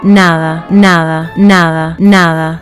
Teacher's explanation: The soft D between vowels here is a sound that most courses don't even teach, but native speakers use it constantly. In Spanish, when the letter D appears between two vowels, it softens dramatically. · In Spanish, when the letter D appears between 2 vowels, it softens dramatically. It becomes almost like the HA sound in the English word.